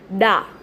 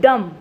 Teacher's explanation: डा is unstressed sound, normal डा. एंड डम, डम इज अ स्ट्रेस्ड साउंड